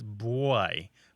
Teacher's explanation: almost as if there's a w after the B